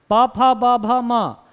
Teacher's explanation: ओठ एक दूसरे को टच कर ही रहे हैं